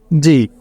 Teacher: জি উপরের তালুর সাথে জিহ্বা লাগিয়ে শ্বাস করে উচ্চারিত হয়